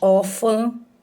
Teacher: Veja que a pronúncia, ela tá saindo pela boca, mas também pelo nariz. Aí aqui é um som nasal, tá? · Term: ditongo nasal